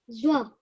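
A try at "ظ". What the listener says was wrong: When you're rounding your mouth, you're bringing the wow sound in. You mustn't bring the wow sound in, okay? Zo.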